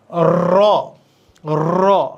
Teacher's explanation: র উচ্চারণের জিহবা কাপে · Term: কম্পন জাত বর্ণ